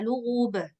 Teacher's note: jangan ditambah-tambah hamzahnya biarin aja dia Lub sudah selesai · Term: qqalah